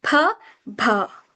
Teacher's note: Okay, bilabial first. So bilabial, as I've told you, that it touches upper lip and lower lip